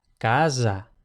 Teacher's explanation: puede pasar que la S cuando va entre dos vocales se pronuncie sonora, es decir, en español decimos casa, pero esa misma palabra en italiano o en catalán sería casa.